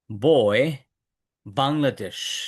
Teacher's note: দুই ঠোঁট বন্ধ করব কিন্তু বাতাস বের হবে না।